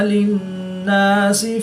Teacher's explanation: نون مشدد میں ہمیشہ غنہ ہوتا ہے تو یہاں پر ہم غنہ آنی کر کے پڑھیں گے۔